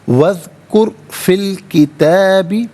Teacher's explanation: وذکر میں را ساکن ما قبل کاف پر پیش، را ساکن کو پر کر کے پڑھا جائے گا